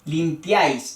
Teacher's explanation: entonces el acento va en la a